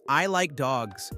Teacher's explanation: Here you emphasize dogs